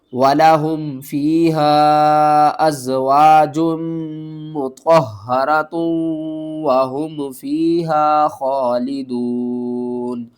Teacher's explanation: ہا کو حلق کے سب سے نیچے والے حصے سے ادا کریں گے، آواز بھاری آئے گی